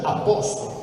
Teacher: si pronuncia a posto, lo raddoppiate, perché è un processo che si chiama raddoppiamento fonosintattico